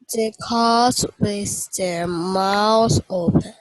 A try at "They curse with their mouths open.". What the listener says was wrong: Right, not mouse. Not mouse, mouth.